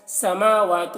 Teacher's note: میم اور واو میں کھڑا زبر ہے، ایک الف کے برابر کھینچ کر پڑھیں گے